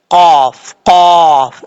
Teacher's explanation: دو نقطوں والا جو قاف ہوتا ہے یہ پر پڑھا جاتا ہے، اس کا مخرج ہے زبان کی جڑ اوپر والے تالو کے نرم حصے سے لگے تو قاف پڑھا جاتا ہے